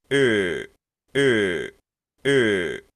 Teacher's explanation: que la diferencia entre este y es es redondear nuestros labios al redondear nuestros labios tenemos es la misma e pero redonda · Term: e redonda